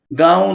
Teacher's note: نون غنہ، نون غنہ میں نقطہ نہیں لکھتے، ناک سے پڑھتے ہیں